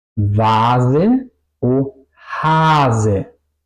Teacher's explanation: Aquí suena la A larga y la S corta. No digo vase o hase, digo vase. · una sola S implica que la vocal antes es larga y la S es corta